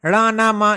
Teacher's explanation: अनुनासिक मतलब जिसका हम नाक के माध्यम से उच्चारण करते हैं नाक से ज्यादा हवा निकलती है